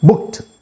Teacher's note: ఈ ఈడికి ముందరున్న letter voiceless, ఈ ఈడి టా లాగా పలకాలి, బుక్డ్ అనాలి. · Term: వాయిస్లెస్ ఎండింగ్